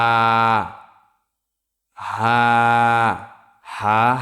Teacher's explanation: কণ্ঠনালী শুরু হইতে উচ্চারিত হয় হা